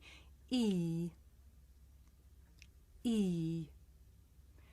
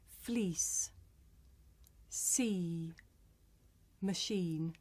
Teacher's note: Vowel number 1 is a front vowel and it's the vowel E. This is a long vowel sound. It's pronounced E.